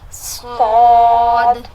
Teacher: صاد نہیں موٹا منہ بھر کے ایسا لگے گا کہ ہمارے منہ میں کوئی چیز ہے جیسے یا تو کوئی منہ میں کچھ رکھا ہوا ہے.